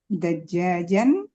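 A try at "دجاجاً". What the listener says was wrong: Enggak dajajnya enggak tasdid Bu dajajan min.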